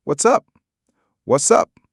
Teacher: In rapid speech, the T in what's often gets dropped and it links to up. It can sound like what's up.